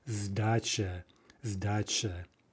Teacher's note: And finally, with change, the initial s becomes more like a z, and we say z, zdacha, zdacha. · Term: voicing